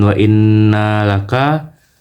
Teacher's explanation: Karena huruf nun ditasdidkan. Cara membaca guna yaitu huruf nun dibaca dengan dengung antara 2 sampai 3 harakat.